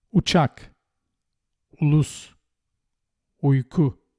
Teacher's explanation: U, as in put and foot, but shorter.